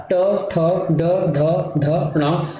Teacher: ये मूर्धा से उच्चारण होते हैं